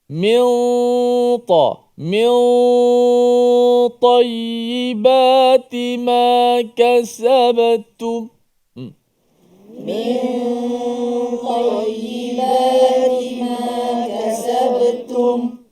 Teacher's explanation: jangan min itu hujung lidah rapat kena nun. Min dia mil, biar ada renggang sikit hujung lidah, jangan sampai kena langit kuat.